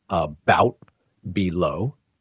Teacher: The first syllable is unstressed, quieter, lower, and shorter, while the second syllable is stressed, louder, higher, and longer.